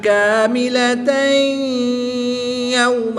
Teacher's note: دو زبر کی تنوین کے بعد یا حروف معلوم میں سے ہے تو یہاں پر بھی ادغام مع الغنہ ہوگا، یعنی غنہ کر کے پڑھیں گے